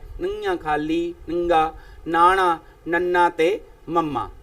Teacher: ਅਨੁਨਾਸਕ ਤੋਂ ਭਾਵ ਹੈ ਜਿਨ੍ਹਾਂ ਧੁਨੀਆਂ ਦਾ ਉਚਾਰਨ ਨੱਕ ਰਾਹੀਂ ਕੀਤਾ ਜਾਂਦਾ ਹੈ। ਨੱਕ ਦੇ ਵਿੱਚੋਂ ਦੀ ਗੁਣਗੁਣਾ ਕੇ ਹਵਾ ਜਿਹੜੀ ਨਿਕਲਦੀ ਹੈ, ਤਾਂ ਉਸ ਸਮੇਂ ਇਹਨਾਂ ਧੁਨੀਆਂ ਦਾ ਉਚਾਰਨ ਹੁੰਦਾ ਹੈ ਨੰਗਾ, ਖਾਲੀ, ਨੰਗਾ, ਨਾਣਾ, ਨੰਨਾ ਤੇ ਮੰਮਾ। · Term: ਅਨੁਨਾਸਿਕ ਵਿਅੰਜਨ